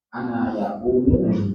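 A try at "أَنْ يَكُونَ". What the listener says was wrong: An, enggak ada anna, an saja. Yakuna. An fungsinya an apa, Pak? Nah, ya sudah baca nasab no. Makanya perlu dilatih itu kayak gitu ya.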